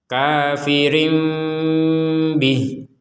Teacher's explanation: bertemu dengan huruf ba maka dibacanya seperti membaca huruf mim Tapi setelah itu yang keluar ba